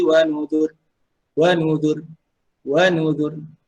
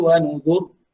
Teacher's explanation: dia boleh berhenti pertama dengan nipis dan yang kedua dengan tebal.